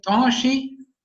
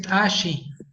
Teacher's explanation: un contraste entre una vocal oral y una vocal nasal